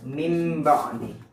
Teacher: Jadi contoh kalimatnya adalah ketika mim ba'di, ada nun mati bertemu ba, maka dibaca iqlab, dibalik. Nah, cara membaca iqlab ini adalah menempelkan 2 bibir syafatain, menempelkan 2 bibir dengan lemah.